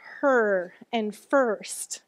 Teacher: But what happens in words like her and first? Yeah, it's actually a vowel, and it's an R-controlled vowel.